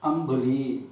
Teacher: இப்போ நம்ம இந்த பர்டிகுலர் 4 வெஞ்சனம் இருக்கு இல்லையா, இந்த வெஞ்சனத்துக்கு முன்னாடி ஒரு வார்த்தையில் இம் வந்தால் அந்த இம்மை எப்படி உச்சரிக்கணும் அப்படின்னாக்க, ப்ராப்பராக நம்ம அனுஸ்வாரத்துக்கு என்ன சப்தம் கொடுப்போமோ அந்த இம் என்ற சப்தத்தை கொண்டுதான் நாம் உச்சரிக்க வேண்டும்